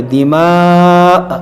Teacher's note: حمزہ کو ساکن کریں گے، جھٹکا دیں گے